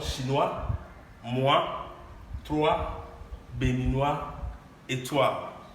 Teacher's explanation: O and I, as I would say in English, and it's going to give us the sound wa